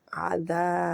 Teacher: आइन खींचना नहीं है, दा 2 हरकत के बराबर खींचना है क्योंकि अलिफ मध्य आ रहा है